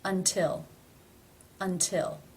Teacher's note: It is beginning a stressed syllable. Therefore, it is pronounced as the real T.